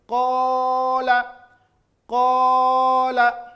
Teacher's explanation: Ketika kita membaca qa, maka dia dibaca panjang, dan panjangnya suara itu terasa sekali keluar dari rongga tenggorokan dan rongga mulut. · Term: huruf mad tabi'i